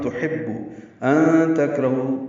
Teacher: ان تکرہو دونوں جگہ اخفا ہے، نون ساکن کے بعد تا آنے کی وجہ سے